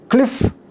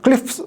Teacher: cliff becomes cliffs only. We cannot have a voiced one there.